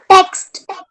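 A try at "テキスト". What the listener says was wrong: टेक्स्ट नहीं pronounce करोगे Japanese में. So जापानीज में जैसे लिखा है वैसे ही pronounce करना है. उसका इंग्लिश में क्या बोल रूपांतर मत करो. So this is your te, then this is your ki, then su, and then to.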